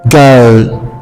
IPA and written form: ɡəʊl (goal)